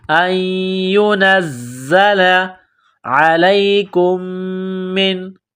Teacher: عین گلے کے درمیان سے زور لگا کر عین کو نکالیں گے، لام کو یا کے ساتھ ملانا ہے۔